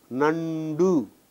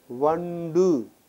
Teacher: Ta preceded by its own nasal becomes da.